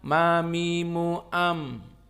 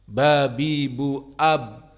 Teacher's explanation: Mim lebih ringan intibaknya, penekanannya daripada ba.